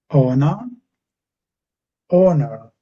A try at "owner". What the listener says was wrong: When you're saying them, they're a little bit too similar. I am finding it hard to work out which one you're saying.